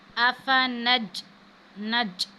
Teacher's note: کیونکہ جیم ساکن ہے اور حروف قلقلہ میں سے ہے، تو یہاں پہ ہم قلقلہ کریں گے